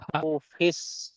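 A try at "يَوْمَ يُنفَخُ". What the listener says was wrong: ফা খ টান হবে না, ফাখু।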